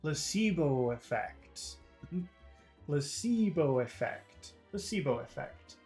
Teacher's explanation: So I think everything becomes long, except for pla. Pla is short, but then everything becomes long in that phrase.